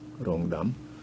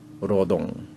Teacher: 또 니은을 리을로 발음하는 그런 이제 현상이 있어요.